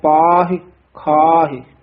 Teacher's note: ਵੀ ਥੋੜਾ ਜਿਹਾ ਕਸ ਕੇ ਬੋਲਣਾ ਹੈ ਜੁਗਾ ਜੁਗੰਤਰ ਖਾਹੀ ਖਾਹਿ ਇਹ ਖਾਹੇ ਪਾਹੇ ਲਾਵਾਂ ਨਹੀਂ ਲਾਉਣੀਆਂ ਸਿਹਾਰੀ ਬੋਲਣੀ ਹੈ